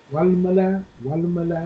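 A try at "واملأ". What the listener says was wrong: Alif is silent. Alif is silent.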